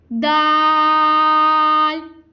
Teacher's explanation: दाल को हमने बारीक अदा करना है। दाल ज़बान की नोक और ऊपर के दांतों की जड़ से अदा होगा। जहाँ से हमने ता की अदायगी की थी वहीं से दाल की भी अदायगी होगी।